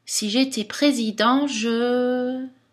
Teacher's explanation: cette intonation qui monte marque toujours quelque chose qui n'est pas fini